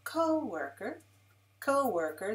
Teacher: three syllables lalala with the stress on the first syllable